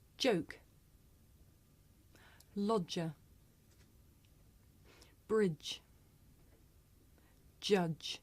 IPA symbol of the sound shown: dʒ